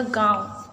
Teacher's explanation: तो अनुनासिक क्या होता है, अक्षर के ऊपर जो अर्धचंद्र बिंदु लगा दिया जाता है, ठीक है, उसे ही हम अनुनासिक कहते हैं। अनुनासिक ऐसे वर्ण होते हैं जिनका उच्चारण कहाँ से होता है, नाक और मुख दोनों से होता है